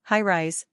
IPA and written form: ˈhaɪ.raɪz (High-rise)